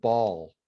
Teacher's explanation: if I say the word ball, it's like a velarized L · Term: dark L